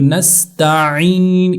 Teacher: عین گلے سے عین نکالیں گے تب جا کر اس کا صحیح طور سے تلفظ ہوگا